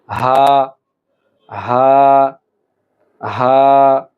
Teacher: আপনাকে হলকের অর্থাৎ কণ্ঠনালীর শুরু থেকে উচ্চারণ করতে হবে